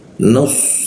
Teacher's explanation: Di belakang gigi. Lidahnya dilengkungkan. ee rongga udara sedikit tertutup sehingga hembusan udaranya agak terganggu.